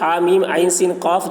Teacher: عین سین قاف جو ہے اس میں عین کو کھینچیں گے اور اخفا